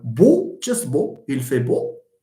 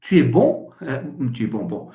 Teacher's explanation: There is a velic closure, okay, in O. But when you say bon, the velum lowers, here it lowers, and the air is allowed through the nose. So bon is a nasal vowel.